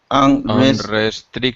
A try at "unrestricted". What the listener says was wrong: Careful with the R.